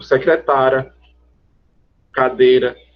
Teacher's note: quando eu digo secretária, cadeira, esse I que estava ali é uma semivogal